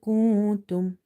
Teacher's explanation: So here we have noon sakin, and we are hiding the noon sakin sound because after noon sakin, if you see there is letter kaf. Kaf is from the ikhfa letters.